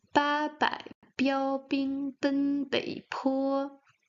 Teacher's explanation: the p is like the b, but you make some air flowing